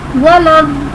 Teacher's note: वक़्फ़ की वजह से हम नून को साकिन कर रहे हैं। वलद्दौलीन आगे वक़्फ़, वलद्दौलीन। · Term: मद्द आरिस